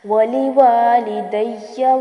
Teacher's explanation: یہاں پر مد اصلی ہوگی ولی والدیہ، اور لاسٹ میں جو یا آ رہا ہے اس کے اوپر تشدید ہے تو زور دے کے پڑھیں گے اور اس کو لمبا نہیں کرنا · وَلِوَالِدَيَّ وَلِلْمُؤْمِنِينَ یہاں پر حمزہ ساکن ہے تو جھٹکا محسوس ہوگا